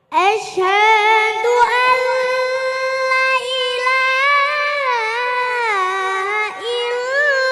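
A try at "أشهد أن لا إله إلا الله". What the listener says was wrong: Nah, itu membacanya la panjang. La-nya panjang. Ayo diulang. Asyhadu an la ilaha illallah, diulang.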